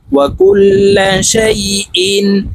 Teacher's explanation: তানউইনের পরে ইজহারের হরফ হামজা আসলে গুন্নাহ ছাড়া স্পষ্ট করিয়া পড়তে হবে।